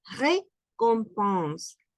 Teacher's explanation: La R gutural, récompense con nasal